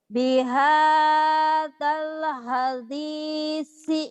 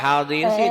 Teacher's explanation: hadisi, dalnya mah keras. Yang rapuh cuman sa-nya doang.